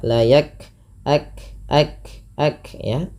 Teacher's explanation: kaf sukun itu punya 2 sifat. Yang pertama yang paling menonjol sifat hamas dan sifat syiddahnya. Syiddah itu tertahannya suara, hamas itu mengalirnya nafas.